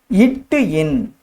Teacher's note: நாவின் நுனி அன்னத்தின் நுனியை தொடுவதால் இந்த இட்டு இன் என்ற எழுத்து உருவாகிறது